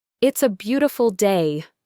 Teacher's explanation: It's a beautiful day. My voice falls on day. This tells the listener my sentence is complete. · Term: falling intonation